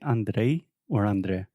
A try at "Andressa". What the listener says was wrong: Andressa. You don't have the I. Andressa.